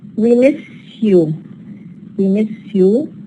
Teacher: We have the change from sa to sha. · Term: palatalization